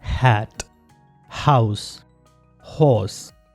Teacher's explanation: Vocal cords एक दूसरे के करीब आते हैं और उसमें से साउंड फ्रिक्शन से प्रोड्यूस होती है और ये एक ही साउंड है ह, as in हैट, हाउस, हॉर्स। ह साउंड प्रोनाउंस करते हुए वोकल कॉर्ड्स वाइब्रेट नहीं करते, सिर्फ वो एक दूसरे के करीब आते हैं और फ्रिक्शन के साथ वहां से एयर प्रोड्यूस होती है। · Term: ग्लोटल साउंड